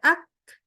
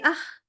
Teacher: Kaf kita bacanya agak mundur lagi ke belakang sehingga baca ak dibaca jadi ah